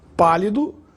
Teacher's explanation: a palavra pálido tem a sílaba mais forte na antepenúltima sílaba, pá. Portanto, é uma proparoxítona. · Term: proparoxitono